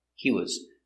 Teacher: He was, because was is not stressed, you hear he was, he was, he was. You link the words and it's not stressed. He was. So it's shorter.